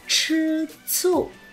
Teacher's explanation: Một cái cong lưỡi bật hơi và một cái chỉ bật hơi thôi.